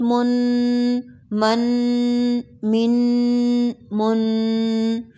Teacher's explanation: یا نہ پڑھیں کوئی فرق نہیں پڑتا میم دو زبر من ون سیکنڈ کے لیے نوز میں اواز کو ٹھہرانا ہے · 1 سیکنڈ کے لیے نوز میں آواز کو ٹھہرانا ہے۔ میم 2 زبر من، نون کی آواز آئے گی۔